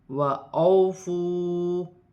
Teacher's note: واو ساکن سے پہلے زبر واو لین ہے، اسے کھینچا نہیں جائے گا۔ واو ساکن سے پہلے پیش ہے، واو مدہ بن رہی ہے، اسے ایک الف کی مقدار کھینچ کر پڑھا جائے گا۔